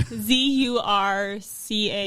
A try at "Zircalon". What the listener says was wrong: It's ZIR, right? ZUR?